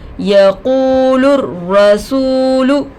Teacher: را پر تشدید آ کر ہے، روئے مشددہ ہوگا. روئے مشددہ پر زبر آ کر ہے، را کو پور کر کے پڑھیں گے. سین پر پیش کی حرکت ہے، جلد پڑھیں گے. · قاف پر پیش کی حرکت ہے، جلد پڑھیں گے. واو ساکن سے پہلے پیش آ کر ہے، واو مدہ ہوگا، تھوڑا کھینچ کر پڑھیں گے. لام پر پیش کی حرکت ہے، جلد پڑھیں گے.